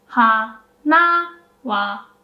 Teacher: So for odakagata, you do go up like low, high, and then when the particle comes, you pronounce the particle with a low pitch.